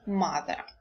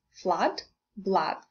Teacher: So, the vowel diagram indicates that this is a central sound in English, that is the central part of the tongue is slightly raised toward the palate. Now, also from the diagram, we can understand that this is an open sound in English, a. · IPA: /ʌ/